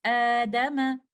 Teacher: the second hamza will be changed into alif mad because alif is compatible with fatha.